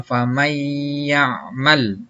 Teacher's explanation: Contohnya dibacanya tidak faman ya'mal, tapi dibacanya famay ya'mal, ya. Jadi masuk disertai dengan dengung. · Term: idgham bihunna